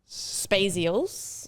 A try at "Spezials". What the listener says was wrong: You even said it with an A then, Spazials. It sounded like you said it with an A, but we think it's Spezial. Spezial.